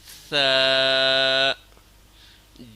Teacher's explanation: ثا کو نرم پڑھنا ہے، دانتوں کے سروں سے زبان کے نوک ٹچ کرنا ہے۔